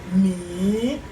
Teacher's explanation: the second tone which is the rising tone